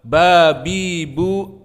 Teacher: maknanya saling menekan pada kedua bibir kita maka makhrojnya di dalam bibir